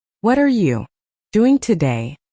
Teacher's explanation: For example, when someone says, "What are you doing today?" the stress usually falls on what and doing